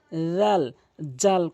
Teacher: জালটি জিহ্বার আগা সামনে দুইটি দাঁতের আগা থেকে উচ্চারণ করতে হবে